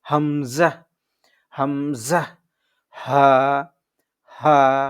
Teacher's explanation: কণ্ঠনালী শুরু হইতে উচ্চারিত হয় হামজা হা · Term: এক নং মাখরাজ